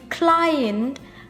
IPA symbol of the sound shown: ai_3